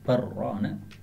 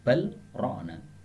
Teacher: jadi lamnya hilang menjadi ra, boleh juga dengan bacaan izhar ya, balrona. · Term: idgham